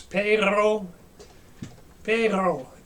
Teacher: It's rolling the uvula in the back of your throat. It's like gargling. That's how you get a really, really gnarly growl sound. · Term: rolling uvula sound